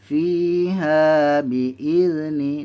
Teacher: fi dengan ha panjang 2 harakat. Mad asli